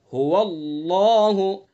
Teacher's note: اللہ کے لام کا قاعدہ یہی ہے کہ اللہ کے لام سے پہلے زبر یا پیش ہوتا ہے تو اللہ کے لام کو پر یعنی منہ بھر کے پڑھتے ہیں